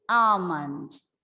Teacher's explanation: you have to make sure that the L doesn't sound. L is silent.